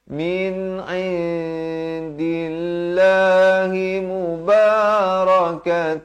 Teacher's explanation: Lafz jalalah dibaca nipis. Jangan baca indillah, itu tebal.